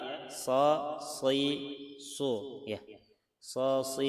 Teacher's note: Dia ada seperti suara siulan ya kan. Jangan sampai datar seperti sin jangan sampai seperti tsa apalagi tebal